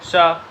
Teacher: आप जो सा बोलेंगे तो देखेंगे कि आपकी टंग जो है आपके टीथ से टकरा रही है जाकर के। तो ये वाला सा जो होगा वो हमारा दंत में आ जाएगा। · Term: दंत्य